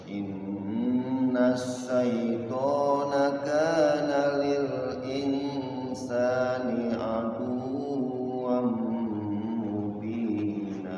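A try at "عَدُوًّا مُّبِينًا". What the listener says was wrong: Nah, aduwam itu tasydidnya enggak ditahan-tahan. Aduwam langsung, aduwam mubina. Pokoknya yang tasydid itu selain mim dan nun tasydid itu tidak ditahan. Kalau nun sama mim tasydid baru innasya tuh langsung innasyaitana kana lil insani aduwwan mubina.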